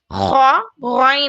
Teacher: देखिए हलक के ऊपरी हिस्से से ख गन अदा होता है। ऊपरी हिस्से से खरखरी वॉइस के साथ गरगलिंग साउंड जैसा ना खार होता है।